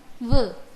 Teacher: अष्टमम् उच्चारणस्थानं दन्त ओष्ठौ स्तः। दन्त ओष्ठाभ्यां केवलं व इति एकः एव व्यञ्जनवर्णः उच्चार्यते। अतः व वर्णः दन्तोष्ठ्यः इत्यपि उच्यते।